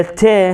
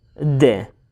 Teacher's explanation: الت voiceless لو voiced؟ أكيد الت voiceless. بما أنه voiceless تكون long وتكون strong.